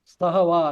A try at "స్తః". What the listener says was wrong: స్తహ స్తహ మామూలు స్తహ, అది మహాప్రాణం కాదు, మామూలు ప్రాణంతో వాడాలి.